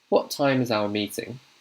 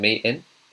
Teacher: So I'm saying meeting. So I'm dropping the T, but I'm also dropping the G as well.